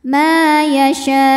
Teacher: ujungnya pakai naber ya agak dinaikkan intonasinya